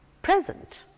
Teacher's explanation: The stress is on the first half, on P.